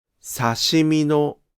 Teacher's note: However, in “刺身の” (sashimi-no), the pitch of the particle does not drop.